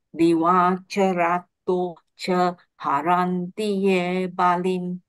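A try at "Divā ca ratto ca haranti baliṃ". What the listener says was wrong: Because just now I hear the diva, the D becomes a long sound. Make sure that it's short. Make sure it's short now.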